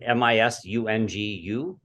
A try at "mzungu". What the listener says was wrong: It's actually Mzungu, Mzungu. So there's no vowel between the M and the Z, so it's Mzungu.